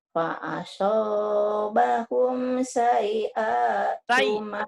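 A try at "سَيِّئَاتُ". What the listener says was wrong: Tasjidnya nyambar Bu ya. Fa'asabahum sayi'atu ma amilu. Nyamber. Kurang nyamber Ibu. Sayyi'a.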